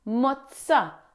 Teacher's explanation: Next, pay attention to the double Z or the double Z. It's not a soft Z sound like in zebra. It's a strong Ts sound, like the Ts in cats.